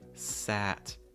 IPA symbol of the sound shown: æ